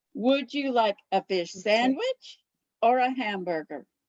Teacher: my voice goes up with the first choice down with the second choice